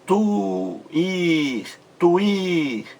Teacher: Esse I aí, o segundo I, forma um hiato em relação à vogal anterior, U.